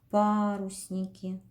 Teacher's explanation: Ударение падает на букву А.